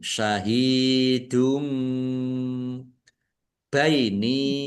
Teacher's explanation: Domah tanwin bertemu dengan huruf ba bacaan iklab dibaca mantul. Ya. Domah tanwinnya dibaca mim.